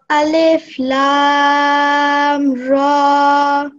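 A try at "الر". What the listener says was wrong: Try saying this lam for a bit longer. Alif Lam Ra.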